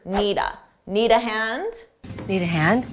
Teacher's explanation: notice need a sounded like one word